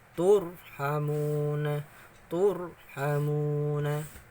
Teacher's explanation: Jadi bacanya tebal. Mulutnya gimana kalau agak tebal? Seperti agak maju sedikit ya. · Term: ro tafkhim